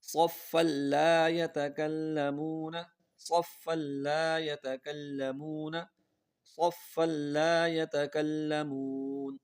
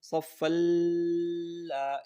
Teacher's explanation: یاد رکھیے دو زبر دو زیر دو پیش یا نون ساکن کے بعد، دو زبر دو زیر دو پیش کو تنوین کہتے ہیں. تو نون ساکن یا تنوین کے بعد اگر لام آ جائے تو غنہ نہیں کرنا، بس ملانا ہے اور آگے پڑھنا ہے